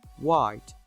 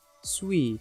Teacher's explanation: /w/ is produced between the two lips, hence it’s called bilabial. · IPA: /waɪt/